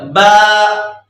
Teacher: دونوں ہونٹ ملے تو با نکلا،